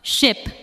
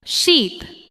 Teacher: In ship, the sound is short and relaxed. In sheep, the sound is longer and the lips may spread slightly.